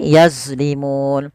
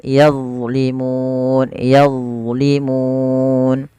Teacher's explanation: Nah, bagaimana melafalkannya sebagaimana tadi di awal, yaitu pangkat ujung lidah kita menempelkan dengan gigi sari dan ditebalkan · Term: huruf dha